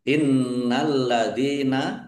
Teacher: nun tasdid dibaca gunah atau mendengung ya ditahan biar tampak mendengungnya